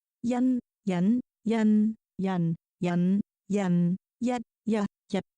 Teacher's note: the first 3 tones have higher pitches and the second 3 tones are at low tone